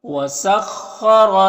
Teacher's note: خا حروف مستعلیہ میں سے پر پڑھیں گے، را کو پر زبر، را کو بھی پر پڑھیں گے